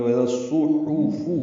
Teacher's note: اب زال کو صاد سے ملائیں گے، ادغام شمسی ہوگا۔ یہاں پر صاد، حا، فا اور نون چاروں حرفوں پر پیشے ہیں، یہ سب مضموم ہیں۔ معروف طریقے سے ہونٹوں کو آگے نکال کے پڑھیں گے، وَإِذَا الصُّحُفُ یعنی معروف طریقے سے پڑھنا ہے۔